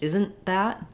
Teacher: Because we don't need the T sound for isn't. We use a stopped T and a short N to mark that.